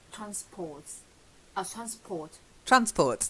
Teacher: It's just transport. The stress is on the first syllable.